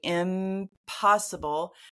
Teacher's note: in the same column together it's easier to say impossible because my lips are together for the M sound because I need to prepare to make the p sound